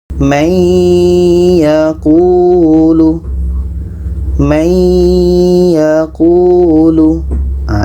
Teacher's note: dan dengung masuk itu maksudnya kita masukkan bunyi Nun kepada ya kita masukkan bunyi Nun kepada ya dan dibaca dengan dengung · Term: Idgham Bighunnah